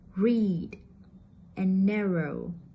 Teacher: in American English the tongue is curved further back giving it a slightly muffled quality